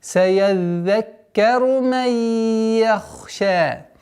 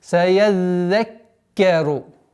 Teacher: Удваиваем за с фатхой, потом уходим на удвоенный каф.